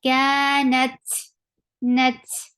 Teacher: Kanat, for fatha, open your jaws, attach with ta. Ta will get sifa of hums, and hums is a flow of breath. Kanat, nat, la is short, ka short.